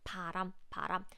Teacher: when these pube sounds comes at the beginning of the syllable it sounds similar to English P but please make sure that you breathe out less air you use less air to pronounce it Korean tube sound param param with lower peach than English P